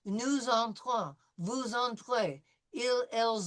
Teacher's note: It's going to be j'entre, tu entres, il, elle entre, nous entrons, vous entrez, ils, elles entrent, ils, elles entrent. So we're going to make the S into a Z sound with the liaison